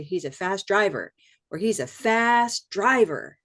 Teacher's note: Doesn't matter how much emphasis you want to put as long as you stressed the second part driver.